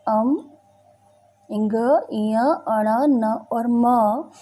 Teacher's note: नासिक यानी मुख और नासिका की मदद से अम, इंग, इय, अण, न और म वर्ण का उच्चारण जो है वो होता है।